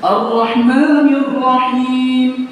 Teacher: menambah getaran huruf ra lebih dari yang semestinya